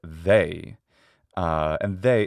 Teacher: they is a diphthong it starts with a but it ends with e and that is not the same as a which is a